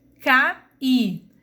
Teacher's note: o I não é semivogal, ele é uma vogal porque ele tem som aberto, tem um som forte